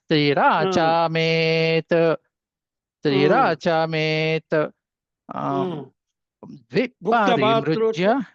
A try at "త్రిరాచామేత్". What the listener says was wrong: త్రిరాచామేతు త్రిరా పైకి అంటున్నారు మీరు.